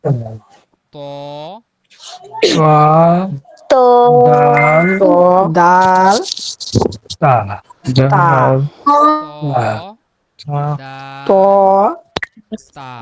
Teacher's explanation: তো ১১ নম্বর মাখরাজ দেখেন, জিহ্বার আগা সামনে উপরের দুই দাঁতের গোড়ার সঙ্গে লাগিয়ে উচ্চারিত হয়